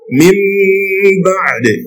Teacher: So what you pronounce is meme. What you pronounce is meme with gunna, and the gunna should be in a manner of ikhfa.